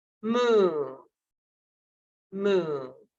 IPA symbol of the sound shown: u: